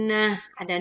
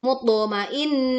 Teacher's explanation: Tak marbutoh dibaca waqaf menjadi ha sukun.